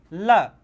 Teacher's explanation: जिसके उच्चारण में हवा जो हमारी होती है जीभ के बगल से निकल जाती है, मतलब उसके साइड से निकल जाती है, उसे बोलते हैं पार्श्विक। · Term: पार्श्विक व्यंजन